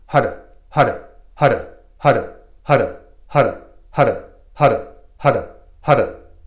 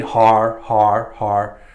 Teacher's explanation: I'm taking the tip of my tongue and touching just behind my teeth in the upper palate